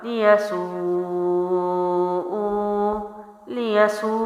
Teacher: اب یہاں کیا کیا، اس کو لمبا زیادہ کیا کیونکہ مد کا سائن ہے، اور اس کو ایک الف ہی لمبا کیا